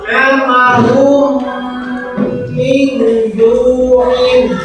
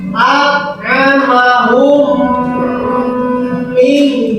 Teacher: Nah, bagaimana ini cara membacanya? Yaitu dengan memasukkan huruf mim mati ke dalam huruf mim yang kedua. Nah, ke dalam huruf mim yang kedua, maka membaca mimnya itu harus rada panjang, ya, antara 2 harokat, ya, 2 harokat atau 2 ketukan. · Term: idgham mutamatsilin